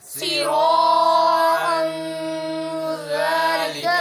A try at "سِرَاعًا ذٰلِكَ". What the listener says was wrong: سیرا کو زیادہ لمبا نہ کرو سراعا ذالک